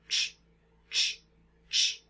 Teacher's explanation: So here we have a t sound followed by a sh sound, except they're co-articulated. They're made at the same time. So we have t and sh going at the same time.